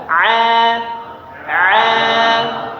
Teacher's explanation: Huruf ain itu tipis. Senyumkan. A a iya. Jangan jadi tebal.